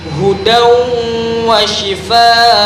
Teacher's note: terdapat tanwin bertemu huruf waw, maka hukum bacaannya adalah idgham bi gunnah